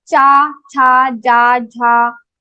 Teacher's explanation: So all these cha group varnas will be pronounced from your talu.